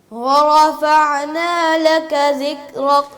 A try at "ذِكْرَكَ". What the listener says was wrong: یہ ذکر کیسے ہو گیا یہ تو دال ہے دال کی بہن